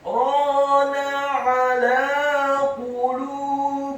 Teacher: Kalla bal rana, kata rana, huruf ra-nya dibaca tafkhim tebal fathah dua harokat karena setelahnya ada alif, kemudian huruf nun-nya dibaca tipis fathah satu harokat